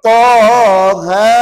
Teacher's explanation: Maka kata ulama ta 2, ha 2. Namanya mat asli harfi. · Jadi toha ni tak boleh masuk dalam mana-mana mat lazim. Pasal apa? Mat lazim kena baca 6. Jadi yang ni sekadar 2.